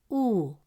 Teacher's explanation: The sound stays the same. It is simply held longer for 2 beats. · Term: long U sound